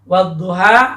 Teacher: alif lamnya pada kata duha ini tidak dibaca jelas tetapi dilebur atau diidghamkan.